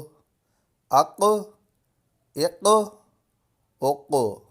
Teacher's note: حروف قلقلہ میں سے ہے، تو اس میں قلقلہ خوب ظاہر ہوگا کیونکہ حروف قلقلہ ساکن ہے